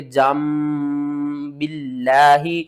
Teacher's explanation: نون کی آواز کو میم کی آواز میں بدل دینا ہے۔ یہاں پر نون ہے نا، تو اس کو ہم نے میم میں بدل دینا ہے، ٹھیک ہے نا۔